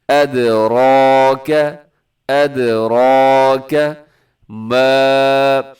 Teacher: یہاں الف سے پہلے زبر ہو تو الف مدہ ہوتا ہے، لمبا کرتے ہیں۔